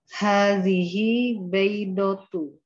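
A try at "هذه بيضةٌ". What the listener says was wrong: Kalau nggak ada alif lam harus bunyi unnya. Baidotun.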